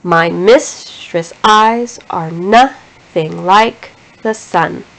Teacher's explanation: there is a pattern of an unstressed syllable followed by a stressed syllable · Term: iambic foot